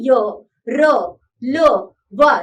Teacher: इन व्यंजनों के उच्चारण में मुंह के किसी भाग से जीभ का पूरी तरह से स्पर्श नहीं होता या जीभ बहुत ही हल्का सा स्पर्श करती है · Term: अंतस्थ व्यंजन